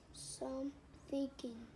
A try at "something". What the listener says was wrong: It's not thinking. Thing.